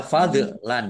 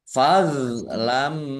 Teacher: do sukun bukan qalqalah jangan dipantulkan ya jangan dipantulkan